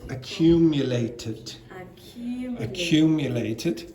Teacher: Because this finishes in a t, then the ed is id.